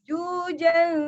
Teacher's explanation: Terasa masuk ke rongga hidung bunyi gunahnya.